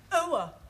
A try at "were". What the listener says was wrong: Almost. Try again, but this time, don't say ower, just were. Were.